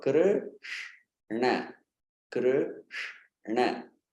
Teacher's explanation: from beginning of the name Krishna till the end, the tongue makes that inward bend movement. Krr, it stays there. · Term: Retroflex